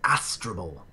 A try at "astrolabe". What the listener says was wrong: His astrable? How did you get that? There's no second L. An astrolabe. An astrolabe.